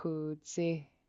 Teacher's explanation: An X in Tlingit without any underline or no pinch. It's just a smooth kind of windy sound that you're making on the top of your mouth.